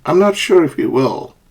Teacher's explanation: A rising intonation. It's used in questions and when somebody is not sure.